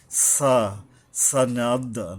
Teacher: সা, এই যে সিন পাতলাভাবে নিচের দাঁতের আঘাত থেকে উচ্চারিত হবে, জিহ্বার আগাটা এসে নিচের দাঁতের আগা মিশবে